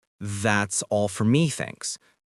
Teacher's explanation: You hear how the native speaker uses the rising tone to signal they are finished ordering.